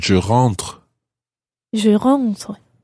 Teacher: when you say je rentre, it's almost just like a little breath at the end.